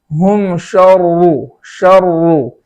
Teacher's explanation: شرو جو کلمہ ہے اس کے اندر را مشدد ہے، یعنی اس پر تشدید ہے، اور اس پر پیش ہونے کی وجہ سے اس را کو پور پڑھیں گے. تشدید ہونے کی وجہ سے دونوں را کو پور پڑھیں گے